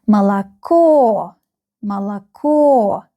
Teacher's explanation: МОЛОКО, МОЛОКО. The last syllable is stressed. You can see the stress on the last O in this word.